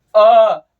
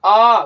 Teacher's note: अ गोल हो रहा है नहीं, आ गोल हो रहा है नहीं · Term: अवृत्ताकार मुखी